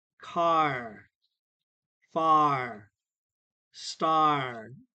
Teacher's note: British and Australia say sta, ka, fa. They do not make the R sound. American English makes the R sound. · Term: American R sound